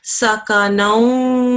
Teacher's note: A wa mushaddad straight after a tanveen, assimilation will take place 2 seconds the sound will take